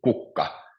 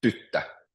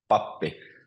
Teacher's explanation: Or tyttö, which means girl, so it's tyttö. So the stress is always on the first syllable. Or pappi, which means priest, pappi.